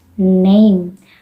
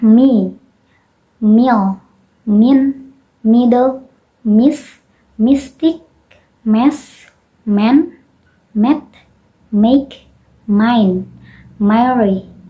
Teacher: The final M does not end abruptly, but it becomes weaker gradually, as with name.